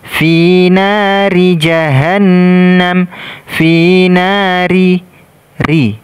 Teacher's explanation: Ra di sini kita baca tipis karena dia berharokat kasrah.